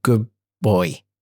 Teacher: Good boy is pronounced as good boy, with the D sound being assimilated in the following B. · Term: assimilation